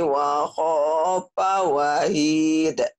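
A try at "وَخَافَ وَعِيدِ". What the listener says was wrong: Wa'id bukan wahid. Wa'id. Wa'id. Tapi panjang. Ini yang dikatakan mad ari disukun. Wa'id. Kayak Bismillahirrahmanirrahim. Panjang.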